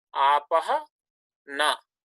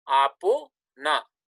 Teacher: this visarga preceded by akara followed by a voiced consonant, this thing changes into O, and nakara remains unchanged.